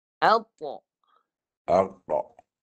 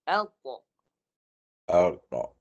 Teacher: Tebal ni datang daripada sini. Pangkal lidah naik dan padunya kita di tengah lidah. Padunya datang dari tengah lidah. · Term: Bunyi tebal